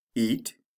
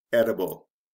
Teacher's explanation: with eat you have a long e sound you change that to a short e sound we change the t to a d and add i b